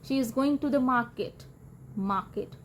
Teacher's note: ਗੋਇੰਗ ਤੇ ਮਾਰਕੀਟ stressed ਹੁੰਦੇ ਨੇ, ਜਦਕਿ ਸ਼ੀ ਇਜ਼ ਟੂ ਦ ਅਨਸਟ੍ਰੈਸਡ ਰਹਿਣਗੇ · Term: ਸੈਂਟੈਂਸ ਸਟ੍ਰੈਸ